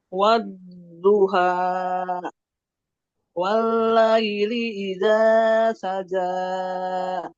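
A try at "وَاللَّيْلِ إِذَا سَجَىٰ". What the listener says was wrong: Jangan terlalu panjang. Ini 2 harokat saja. 2 harokat saja.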